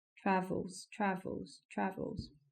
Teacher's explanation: The stress is in the same place: TRAvels, TRAvels, TRAvels -- In the beginning of the word.